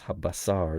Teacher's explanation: Now, of course, this one is pronounced sin, because it's habasar, the word for meat. It's the S sound rather than a sh sound, but it's the same letter.